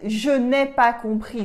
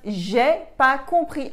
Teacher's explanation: in everyday modern French, we drop the ne and we only use pas. As in, je n'ai pas compris that you learned at school becomes j'ai pas compris in real life.